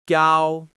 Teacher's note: You start at a high pitch and you stay there without dipping or rising. If English is your native language, imagine you're saying O in a bored or flat way, but keep it on one clean level. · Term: first tone